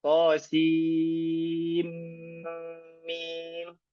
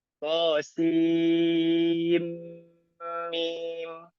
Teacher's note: Kita baca dengan mengidghamkan sin ke mim.